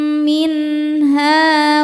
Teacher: Sebab ada alif sebelumnya berharakat fathah. Cara membacanya huruf ha ini dipanjangkan dua harakat. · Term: mad thobi'i